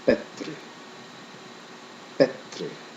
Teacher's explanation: B in Old Norse is a sound halfway between the English B and P.